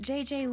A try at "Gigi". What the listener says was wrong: Gigi. En français, you pronounce G like J and J like G. She may very well be JJ in America, but in France, she is Gigi.